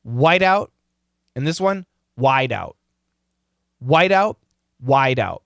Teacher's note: They sound the same because the flap T sounds like a D.